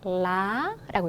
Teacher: 조금 높고 길게인데 성조가 들어가 있기 때문에 이 성조를 먼저 살려서 그러니까 이제 길게 읽으면서 올려주면 되겠죠